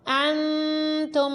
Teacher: دیکھیں نون ساکن کے بعد تا ہے تو اخفاء ہوا، نون ساکن کی آواز میں غنہ کیا۔